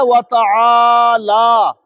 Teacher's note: عین کو کھینچنا ہے اور لام کو بھی کھینچنا ہے